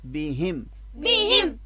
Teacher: با کی زیر جو ہے وہ بھی لمبی نہ ہونے پائے